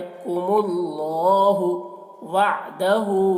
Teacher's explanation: हा के ऊपर जो मद है, इस मद को मद्दे मुनफसिल कहते हैं। इसको 3-4 अलिफ के बराबर खींचकर पढ़ते हैं और 1 अलिफ के बराबर भी खींचकर पढ़ सकते हैं।